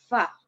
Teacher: bibir bawah tu kita tekan ke gigi kapak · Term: Huruf fa